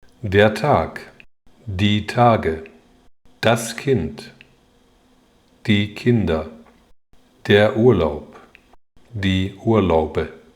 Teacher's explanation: 如果这些浊辅音后面接上了元音，比如变成复数或者是添加了词尾，那么浊音就会恢复原本的浊读，而不再清读。